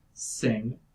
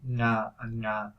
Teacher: the velar place of articulation is where you would pronounce a K